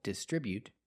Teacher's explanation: They distribute their products, with a stress on the second syllable, distribute.